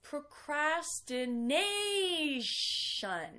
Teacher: the stressed syllable is the second to last